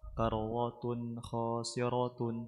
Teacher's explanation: تاء تنوين بالضم مظهر قبل الخاء المفتوحة